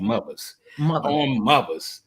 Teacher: we don't use the th sound. We use the v.